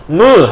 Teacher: 무 하면 코가 웅 하고 울리는 걸 느낄 수 있을 거예요. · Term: 비음